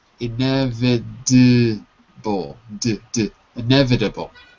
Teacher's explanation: the T sounds like a D in American English